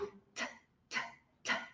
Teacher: quando você fala o t não vai vibrar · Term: desvozeada